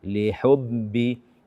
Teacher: membaca ba tasydid dengan suara dari hidung. Lihubbi. Ini tidak dibenarkan.